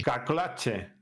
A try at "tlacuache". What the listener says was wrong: A ver, vamos a pronunciar esa L. Esa L nos está faltando, ¿ok? Tlacuache.